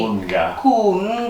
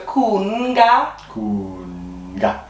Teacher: there's a little N in between the U and the G